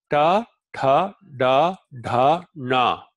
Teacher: da da is pronounced with the tongue against the alveolar Ridge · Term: cerebral, cerebrals